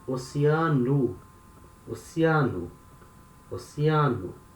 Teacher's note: Letter O at the end of a word, it can have the sound of U.